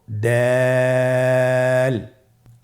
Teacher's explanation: দাল হরফটি বারিক হরফ। এ হরফটি উচ্চারণ করার সময় আমরা অবশ্যই তিন আলিফ টেনে পড়ব।